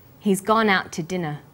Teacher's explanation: We stress he's, gone, out, and dinner. The two is unstressed.